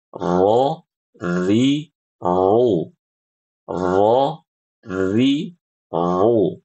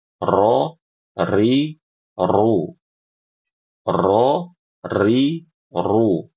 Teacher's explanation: Perbedaannya, kalau huruf ro yang fasih, getarnya sangat sedikit. Ya, ada getarannya tapi sedikit. Adapun yang kurang fasih itu terdengar getarannya, ya, ya terdengar getarannya.